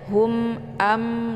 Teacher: ini dibaca jelas bunyi m nya karena mim sukun bertemu dengan Hamzah merupakan idzhar syafawi jadi dibaca jelas Hum cara bacanya cukup ditekan saja ya Hum